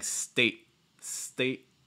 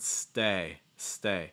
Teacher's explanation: stay stay it's like state s-t-a-t-e what you're doing is you're you're tightening your throat and your chest a little bit and you're also shortening your vowel sound so basically when you make that glottal stop you're not letting